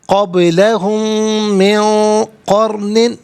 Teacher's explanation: قرن میں را ساکن، اس سے پہلے قاف پر زبر ہے. را ساکن ہو ما قبل حرف پر زبر ہو تو را ساکن کو پر کر کے پڑھا جاتا ہے